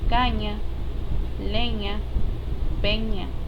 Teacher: zona pre fatal cerrando de este modo la salida del aire el velo del paladar desciende saliendo el aire a través de las fosas nasales las cuerdas vocales vibran y ortográficamente se representan por la grafía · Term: nasal linguopalantal sonora